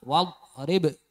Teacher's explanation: Nah itu wadu itu tadi memantul, jadi harus ditahan wadrib. Untuk ba-nya dipantulkan, tapi untuk do-nya jangan sampai dipantulkan ya. Jangan sampai wadrib itu namanya memantul ya.